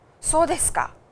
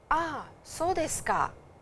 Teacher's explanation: So desu ka? And intonation is always rising. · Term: rising intonation